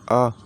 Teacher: जब हम आ बोलते हैं तो हमारा मुख का जो द्वार है पूरा का पूरा खुल जाता है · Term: विवृत स्वर